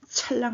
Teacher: 찰랑 하는 순간 호흡이 훨씬 더 성대도 긴장할 뿐더러 거세게, 거칠게 나오죠. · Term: 거센 소리